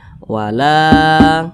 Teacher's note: Ini namanya mat tabi'i. Panjangnya 2 harokat atau kira-kira 2 ketukan.